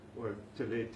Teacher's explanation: in dialect the th changes to a T and you get rid of all those extra vows and it